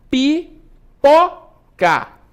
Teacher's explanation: Aqui eu pronuncio aí com mais intensidade, com uma maior intensidade, tá bom? Pipoca. A sílaba tônica é o pó.